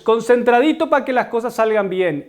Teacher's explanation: supresión de la consonante r típico de ciertas zonas como colombia venezuela ecuador